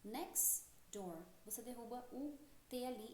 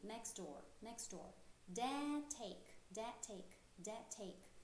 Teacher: next door, você derruba o T ali e acaba linkando o X com o D.